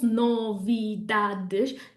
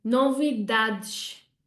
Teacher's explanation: We have 1 stress instead of 4 and it falls on the dad.